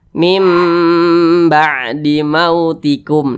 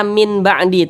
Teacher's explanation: depannya ada huruf ba maka huruf ba Ini huruf iqlab maka cara membacanya ee dengan merubah menjadi Bunyi mim · Maka cara membacanya dengan merubah menjadi bunyi mim. Nah, ini makanya di sini kalau di dalam Al-Quran itu dikasih tanda mim kecil.